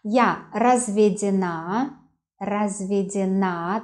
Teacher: the stress on the last syllable